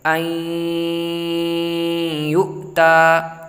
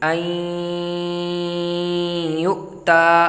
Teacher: نون ساکن کے بعد یومن میں سے یعنی یا واو میم نون میں سے یا آیا ہوا ہے، تو ہم اس کو غنہ کے ساتھ پڑھیں گے، این یؤتا۔ میم یا زبر مئی ایسے نہیں پڑھیں گے، میم یا زبر مئی، بلکہ غنہ ہم بعد میں کریں گے جب اگلے حرف کی ہجے کر چکے ہیں۔ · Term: ادغام